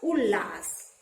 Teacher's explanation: यदि त के बाद ल आता है तो त ल में बदल जाता है। त किस में बदल जाता है, ल में बदल जाता है।